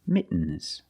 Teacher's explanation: when you make the stop T the tongue is up almost in the end position